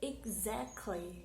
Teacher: the middle syllable is the stress